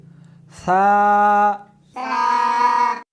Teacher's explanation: اس حرف کو زبان کو دونوں دانتوں کے درمیان رکھ کر پڑھیں گے